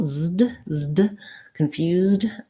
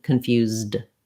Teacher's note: you just have to go from that continuing Z sound, lift your tongue to stop the air